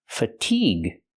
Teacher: stress the second syllable make the long e sound like green beans fatigue with the hard G sound and the UE is silent